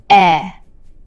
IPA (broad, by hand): ɛ